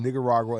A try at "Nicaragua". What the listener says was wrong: Ooh, yeah, say that slower than bro. Because it ain't nigga. It ain't nig in there. It's Nicaragua. It's Nick. It's got a in it.